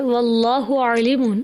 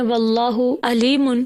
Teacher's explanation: بس عین کی جگہ حمزہ پڑھنے سے کتنا غلط معنی ہو گیا